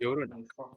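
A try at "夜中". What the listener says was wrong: Yonaka. So, Yonaka. There's no u there. It's Yonaka. Yonaka.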